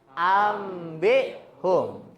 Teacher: Jadi bacanya itu sinunnya itu diganti sama mim. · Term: iklab